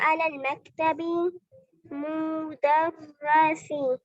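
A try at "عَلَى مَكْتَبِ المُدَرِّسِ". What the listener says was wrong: मक्तबिल मुदर्रिसी। मक्तबिल बिल पढ़ना है इसको मिलाना।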